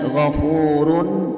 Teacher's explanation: cara membacanya yaitu terang dan tidak boleh mendengung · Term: izhar halqi